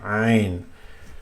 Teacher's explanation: just like ha, but it's from the middle of the throat. Ain. You can feel it here in the middle of the throat, below the Adam's apple, so to speak.